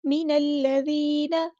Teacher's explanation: نون کی زبر یعنی فتح کو لمبا نہیں کرنا